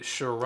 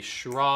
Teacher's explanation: It's a shra, the ah vowel, and then you turn to the diphthong right before you get to the schwa